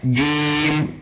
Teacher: ننطق حرف جيم يكون شديدا مجهورات فلا اقول جيم جيم لا اقول جيم شديدا مجهورات انه بدون · ثم ننطق حرف جيم يكون شديدا مجهورا